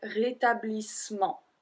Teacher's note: Technically, we don't pronounce the E after the double S, so we will say rétablissement.